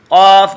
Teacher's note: जड़ जबान तालू से मिलकर क़ाफ में निकलेगा